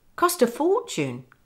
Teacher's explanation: Notice the stress, cost and for.